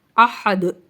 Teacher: اسی طرح دیکھیں احدن، وقفی صورت میں پڑھیں گے احد، کیونکہ دال حروف قلقلہ میں سے ہے تو اس پر ہم مخرج کو ہلا کر پڑھیں گے احد، ٹھیک ہے، آواز باؤنس ہوگی۔